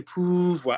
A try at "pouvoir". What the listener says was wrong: and go to the tummy. Not poo, OU, not poo. Pouvoir.